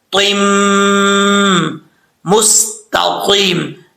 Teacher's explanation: نون تنوین کے بعد میم آ رہا ہے حروف یرملون میں سے، تو یہاں پہ ادغام یرملون ہوگا غنہ کے ساتھ